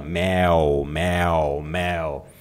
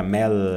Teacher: No alemão, a pronúncia do L alemão, você coloca a língua lá no céu da boca